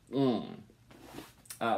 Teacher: it's pronounced like an n except at the back of your throat or the back here your mouth so it's a velar sound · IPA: ŋ